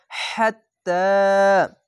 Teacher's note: বাতাস বের করে একটু মোটা করে গলা চিপের মত পড়বেন